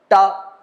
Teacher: ट बोलते समय हमारी जिवा जहां पर जाती है ट वो स्थान कहलाता है मूर्धा